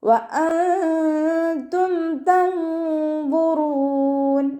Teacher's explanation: നൂൻ സാക്കിനയെ മറച്ചു വെച്ച് മണിച്ചോതി കൊടുക്കുക കേട്ടോ. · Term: ഇഖ്ഫാൻ്റെ